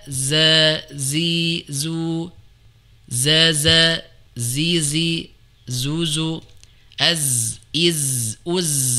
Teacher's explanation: makhrajnya di ujung lidah ketemu dengan dinding belakang gigi seri bawah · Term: huruf zai